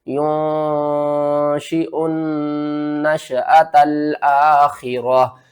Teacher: حمزہ کو نون سے ملانا ہے، نون مشدد ہے، غنہ کریں گے، درمیان میں الف اور لام کو چھوڑ دیں گے۔